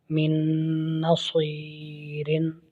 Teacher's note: نون ساکن کے بعد نون حرف یرملون ہے، ادغام ہو رہا ہے۔